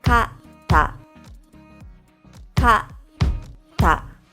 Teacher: For the second word, the middle beat has no sound. It's like you hold your breath after the first sound and then blurt out the next sound. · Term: double consonants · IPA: /katta/